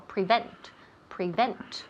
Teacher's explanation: The emphasis falls on the second syllable. All right, the second syllable.